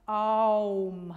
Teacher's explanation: Man schreibt immer Om, aber eigentlich lautet die Silbe A-U-M und dann kommt eine Pause. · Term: Diphthong